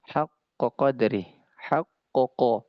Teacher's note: Maka keduanya pasti akan sama ee keluarnya karena ee yang dua ini adah sama-sama tempat keluarnya itu yaitu di pangkal lidah. Huruf qof di pangkal lidah bertemu dengan langit-langit yang lunak.